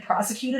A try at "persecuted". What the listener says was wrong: You said prosecuted, as in like prosecution, as in like legal. Persecuted.